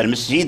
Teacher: المسجد، مسجد مسجد، فكلمة المسجد هكذا المسجد ما بال سين، إذن فلا بد يعني بتوأدة أنك تنطق بالسين حتى يسمع صفيرها ، عاد تمشي إلى الجيم الجهير الذي فيه صفة الجهر، فالمسجد